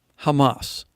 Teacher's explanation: But in the Hebrew, the H is pronounced more with the hard CH sound. However, in the Sephardic pronunciation, it's pronounced with an H sound